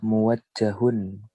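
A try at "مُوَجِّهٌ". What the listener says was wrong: Bukan muwajjahun ya, muwajjihun. Isim fa'il ya. Huwa muwajjihun fil madrasati as-sanawiyah. Huwa muwajjihun fil madrasati as-sanawiyah.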